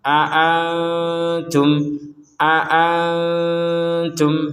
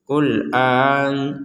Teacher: perhatikan di sini ada dua hamzah ya, ada dua hamzah, maka harus jelas dua-duanya ini. Jangan sampai dibaca seperti itu.